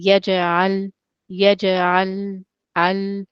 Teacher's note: in yaj'al, jim and lam have greater timing